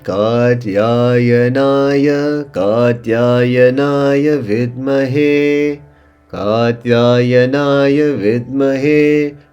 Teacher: Kat, double A going low. Ya, double A going low. Ya, singular going low. Na, double A middle sound. And Ya, singular going high.